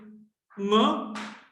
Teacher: So, nga is a voiced velar nasal.